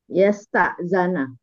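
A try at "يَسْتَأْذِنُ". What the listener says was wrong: yastaf'ilu, bukan yastaf'alu. Yastaf'ilu. Bukan. Yastaf'ilu, bukan ila, tapi ilu.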